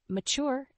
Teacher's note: the word mature has two syllables with the stress on the second syllable